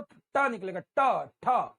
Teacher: तालू के बीच वाले पार्ट पे जीभ जाकर लगेगी, ऐसे ताब ऐसे लगेगी, और ऐसे झटके से फेंकेंगे तो ट निकलेगा, ट, ठ। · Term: मूर्धन्य